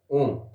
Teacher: के आधार पर संयुक्त स्वर के अंतर्गत रखा जाता है यानी दीर्घ से भी ज्यादा समय लगता है